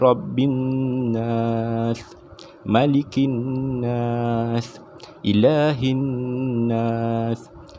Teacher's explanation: dibaca dengan dengung secara dua harkat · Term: wajibul ghunnah